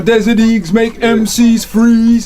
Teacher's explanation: all the vowel sounds are drawn out, and that's an American accent in general